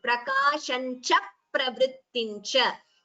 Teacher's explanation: Dvitvam here after cha. So double pa is heard.